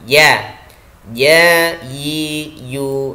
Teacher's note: Yang pertama adalah sifat jaher jadi nafas kita tertahan